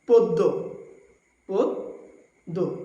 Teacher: যদি শব্দের শুরুতে অধ্বনি থাকে এবং এরপরে যদি জফলা থাকে তবে অধ্বনির উচ্চারণ উকারান্ত হয়ে যায় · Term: সংবৃত